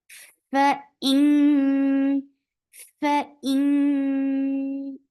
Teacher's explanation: Yes, it sounds like idhar, but the mechanism is very different. فإن فإن this ikhfa is light, but still your tongue is up.